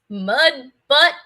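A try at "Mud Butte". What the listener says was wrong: That's not butt. That's butte.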